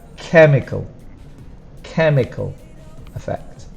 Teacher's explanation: for pronunciation the stronger sound is the first syllable